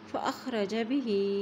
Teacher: ہا کے نیچے کھڑی زیر ہے تو اس کو بھی ایک حرکت ہم لمبا پڑھیں گے